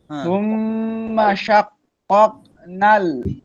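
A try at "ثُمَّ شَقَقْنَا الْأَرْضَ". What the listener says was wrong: না, কফের উপর তাসদীদ নাই। কফ দুইবার কেন? শাকাক, শাকাক।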